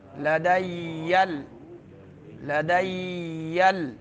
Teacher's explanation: یا کے اوپر شد ہے، جلدی چھوڑنا نہیں ہے